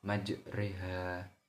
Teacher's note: hukum bacaan fathah yang miring ke kasroh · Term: imalah